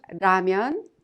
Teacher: Lastly, there isn't an exact match to the 리을 sound in English, but you can consider it a sound in between the L sound and the R sound.